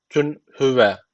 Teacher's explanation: burada tenvinden sonra he gelmiş. İshar tecviti var.